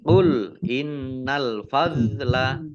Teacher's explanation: Nun tasdid dibaca gunah ditahan dua harakat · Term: gunnah